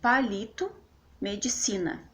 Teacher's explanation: a sílaba tônica é a penúltima por exemplo palito medicina então a sílaba tônica na tá no li de palito né na penúltima · a sílaba tônica tá no li, de palito, né? Na penúltima. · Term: paroxítonas